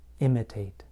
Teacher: on the verb imitate, I place stress on the first part of the word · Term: word stress